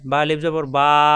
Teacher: বা একালি পরিমাণ টানতে হবে দুই ঠোঁট থেকে।